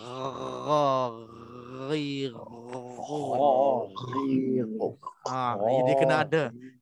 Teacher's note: dia akan macam gegaran pangkal lidah dengan hujung halqum itu dia ada kerjasama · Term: huruf ghain